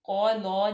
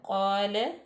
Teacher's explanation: قال لام باریک پڑا جائے گا، قال نہیں کیا جائے گا، قال.